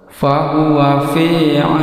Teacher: Ini fahuwa fi, ini ada huruf ya sukun sebelumnya kasrah, ini adalah mad asli. Suara di ayun tidak lebih dari 2 harakat.